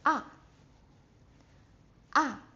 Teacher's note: So you have to go from your highest tone and to the lowest pitch. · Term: fourth one